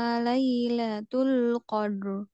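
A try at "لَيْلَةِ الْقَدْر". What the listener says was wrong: Itu masih ditahan ya tadi ya. Masih ada jeda.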